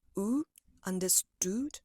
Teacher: So you're using this round protruding sound, oo, understood. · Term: longer vowel oo